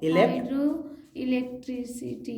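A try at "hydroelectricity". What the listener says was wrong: हाँ, हाइड्रो इलेक्ट्रिसिटी। चलिए, अच्छा प्रयास था, आगे बढ़ेंगे।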